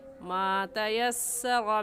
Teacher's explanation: रा के ऊपर ज़बर है, पुर यानी मोटा करके पढ़ेंगे